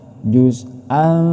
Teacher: Ini tanwin bertemu dengan huruf tsa. Ini disebut ikhfa. Cara membacanya harus samar dengan berdengung.